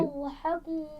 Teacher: ضاد پہ قلقلہ نہیں ہونا چاہیے